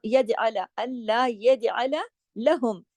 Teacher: जीम पे कलकला होगा